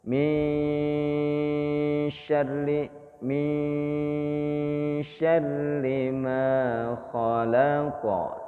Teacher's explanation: nun sukun bertemu dengan S dengungnya itu dimasukkan huruf s itu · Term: Ikfa, ikfa